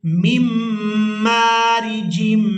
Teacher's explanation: हमने नून साकिन को अदा नहीं करना, मीम को मीम मुशद्दद के साथ मिलाएंगे